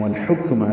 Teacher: والحکم لام ساکن پہ اظہار، کاف ساکن پہ حمز